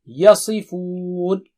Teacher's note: سی جو ہے بہت موٹا اونچا ہے، لیکن زیر کی وجہ سے وہ بہت موٹائی اونچائی اس میں تھوڑا کمی آ جاتی ہے